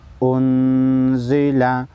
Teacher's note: نون ساکن کو غنہ کریں گے اس کے بعد حروف اخفا میں سے زا ہے